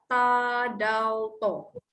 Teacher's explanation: Memudahkan sebab dia gusi atas sahaja. Hujung lidah ke gusi atas